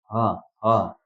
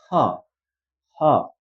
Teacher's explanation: र यो ह नेपाली ह कस्तो हुन्छ भन्दाखेरि ह ह भनिन्छ नि, तर यो चाहिँ ह ह, हल्का साससँग ह निस्किनु पर्यो